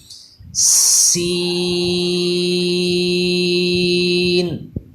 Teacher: ثا اور سین، ان میں یہی فرق ہوتا ہے کہ ثا جہاں پہ بھی آئے گا اس پہ سیٹی پیدا نہیں ہوا کرے گی، زبان کو اوپر کے دانتوں سے چپکا کے پڑھا کریں گے، اور سین والے حرف کو یہ دانتوں سے زبان چپکائیں گے نہیں بلکہ اس پہ سیٹی پیدا کیا کریں گے